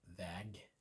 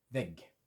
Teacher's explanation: The longer Ä sound in väg because it's got one G, the shorter Ä sound in vägg because it's got two G's on the end.